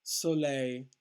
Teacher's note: the stress on the last syllable